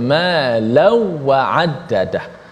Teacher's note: adapun Khalaf baca tanpa gunnah, bi ghairi gunnah, maksudnya ma law wa addadah.